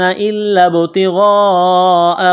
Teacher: اس لام میں سختی کریں گے، لام کو دبائیں گے، با کے ساتھ پلس کریں گے، با ساکن ہے، قلقلہ کریں گے با پر